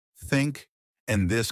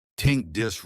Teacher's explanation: Another big mistake is the thash sound, like in think and this. Many learners replace it with T or D, so they say tink instead of think or dis instead of this. Right. The trick is to put your tongue between your teeth and blow air out.